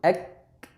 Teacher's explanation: Misalnya kita baca kaf sukun, ek, tertahan dulu baru mengalir. · Karena pada proses pengucapan huruf kaf, pangkal lidah menempel. Maka dengan itu tidak ada aliran suara, terhalang oleh lidah yang menempel. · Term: syiddah